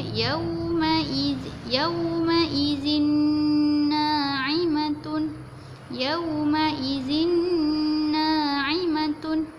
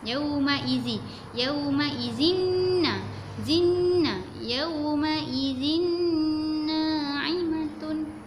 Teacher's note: Bila nun berjumpa dengan nun, dia jadi huruf nun lah. Jadi hujung lidah kita tu mesti kena gusi hadapan.